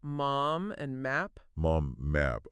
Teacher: okay m is pretty straightforward yeah it's like humming it is you just close your lips and let that sound resonate in your nose